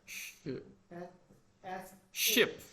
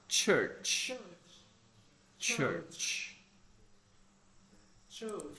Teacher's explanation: in ship or dish you have this just the this sound sh but in the church you have like a t sound before the sh yeah so you have to use your tongue and for the